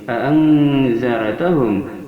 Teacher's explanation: an ini adalah ikhfa awsat, dikarenakan nun mati bertemu za, salah satu huruf ikhfa awsat yang 10.